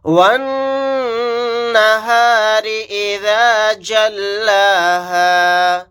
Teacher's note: واو کو نون کے ساتھ ملا دیں گے، یہ الف اور لام نہیں پڑھے جائیں گے، نون کے اوپر تشدید ہے، یہاں پر غنہ کر کے پڑھیں گے، را کو باریک پڑھیں گے۔